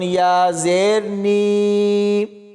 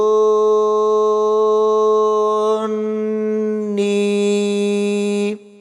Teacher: ہے، اور آگے نون کے اوپر غنہ بھی ہونا ہے، اور آخر میں نون کو یا کے ساتھ ملائیں گے تو یا مدہ ہوگی، اس کو بھی کھینچ کر پڑھیں گے